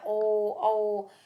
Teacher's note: होठ पूरी तरह से गोल हो जाते हैं और साथ में गले में से सीधी-सीधी आवाज निकलती है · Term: कंठ और ओष्ठ